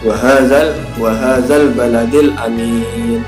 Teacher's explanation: cara membaca bacaan alif lam qamariah adalah huruf alif lam terdengar jelas dan tidak lebur dengan huruf qamariyah yang mengikutinya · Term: Alif Lam Qomariah